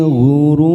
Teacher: Ghurur mat arid disukun 4 harokat kita panjangkan, dan ada huruf ro yang diwakafkan dan sebelumnya ada huruf waw sukun.